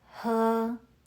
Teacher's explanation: 喝 uses the first tone. Keep your voice high and steady like you're holding a note.